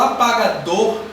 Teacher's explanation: apagador vai ser uma palavra oxítona pois se trata da última sílaba mais forte